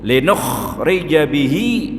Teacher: Pada ayat yang ke-15 niku linukhrija bihi, linukhrija itu huruf kha, nah itu harus betul-betul kita paham bahwa itu huruf kha harus dibaca ada getarannya